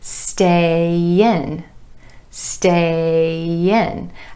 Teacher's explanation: that final A in stay linking over in front of the I and in with a gentle ya.